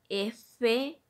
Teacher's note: producidos al apoyarse en el labio inferior contra incisivos superiores